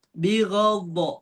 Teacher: Ketika baca bigh itu berasa di sini nih ada kayak gesekan. Terus ketika ada gesekan pasti suaranya tuh tebal.